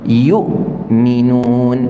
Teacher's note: kita namakan dia syiddah Contohnya apa Hamzah yukminun ketika kita sebut Hamzah yang mati tak ada dah suara kita keluar terputus dah yuk kerana apa makhraj tutup rapat e ha Tu ada